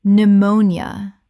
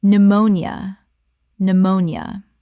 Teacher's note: 3 syllables in natural speech. The P is completely silent and the nia collapses.